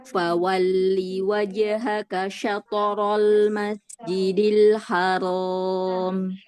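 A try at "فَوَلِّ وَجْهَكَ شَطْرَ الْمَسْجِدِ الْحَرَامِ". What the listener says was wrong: Terlalu cepat untuk aliran suaranya.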